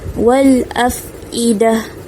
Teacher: Okay, wal afidah. Okay, huruf fa baris sukun, makhraj fa, gigi atas, gigit bibir bawah.